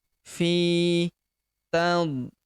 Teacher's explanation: Huruf fi kita panjangkan dua harakat karena di depannya terdapat ya sukun